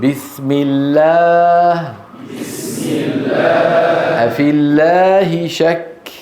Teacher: لاحظوا الأمام نفسه، لكن الاختلاف من الوراء. اللام المرققة ليس في أقصى اللسان ارتفاع ولا تقعر للسان